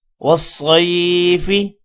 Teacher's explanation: صاد کو موٹا پڑھیں گے، اور یہ یا لین ہے، یا ساکن سے پہلے زبر ہو تو یا لین کو تھوڑا سا کھینچ کر پڑھتے ہیں، 1 سیکنڈ سے بھی کم